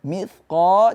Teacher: jangan kita baca pakai sin, akan tapi huruf tha, ujung lidah berada di bawah gigi seri